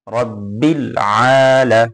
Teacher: এক আলিফ টান হবে আইনে